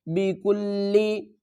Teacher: کاف کو لام سے ملائیں گے، لام کے اوپر سختی کریں گے